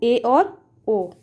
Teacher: अर्धसमृत स्वर को बोलने पर मुख समृत स्वर को बोलने से खुलने वाले मुख से थोड़ा ज़्यादा खुलता है। जैसे समृत का मतलब हमने बताया है, स्वर को बोलने पर सबसे कम मुंह खुलता है, लेकिन जो अर्धसमृत स्वर होते हैं जब हम उन्हें बोलेंगे तो हमारा मुंह जो है समृत स्वर की अपेक्षा ज़्यादा खुलेगा, यानी मुंह आधा खुलेगा।